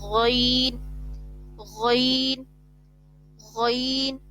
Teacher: غین جو ہے وہ حلق کے اوپر والے حصے سے ادا ہوتا ہے